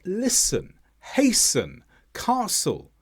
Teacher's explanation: Words such as listen, hasten, castle, all have a silent T because they come after the S.